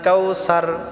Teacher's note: ছাটা আমরা পাতলা করে উচ্চারণ করব